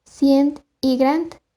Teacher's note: se hace la pronunciación de la oclusiva dental sorda T al final de la palabra, probablemente por grafía conservadora.